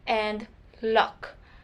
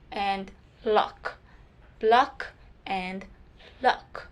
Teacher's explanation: the tip of my tongue is touching the alveolar ridge, or is being placed to the alveolar ridge. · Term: liquid and laterals